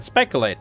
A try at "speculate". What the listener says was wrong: There's a U in it.